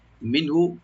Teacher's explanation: নুন সাকিন এখানে আমরা জাহার করবো, এখানে গুণা হবে না, আর হাতে টান নাই।